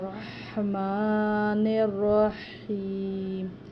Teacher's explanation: یہاں پر ہا جو ہے یہ حلق سے ادا کرنے والا ہے، دونوں میں رحمن الرحیم، اور ساتھ میں میم کے اوپر کھڑی زبر ہے، اس کو لمبا بھی کرنا ہے۔